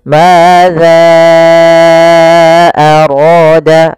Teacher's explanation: Maka kita panjangkan za-nya, hati-hati juga jangan terbaca dengan zai, tapi tetap za, yaitu ujung lidah menempel dengan gigi di atas. Madza arada, baru dibaca dengan panjangkan za-nya dulu 4 harokat, baru kita baca a-nya. · dibaca dengan panjangkan za-nya dulu 4 harokat, baru kita baca a-nya. Kemudian pelafal ra, di sini ada mad tabi'i, fathah bertemu alif, ra-nya dibaca dengan tebal karena ra berharokat fathah.